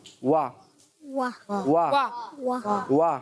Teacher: तो वाव की अदायगी हमेशा होंठों की गोलाई से होती है। · पहले होंठ नॉर्मल है, फिर गोल होंगे और फिर नॉर्मल।